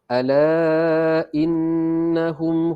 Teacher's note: Ala 4 ataupun 5 harakat, ini hukum mad jaiz munfasil sebab huruf alif mad bertemu dengan hamzah dalam 2 perkataan. Nun di sini kena dengung sebab nunnya sabdu wajibul gunnah.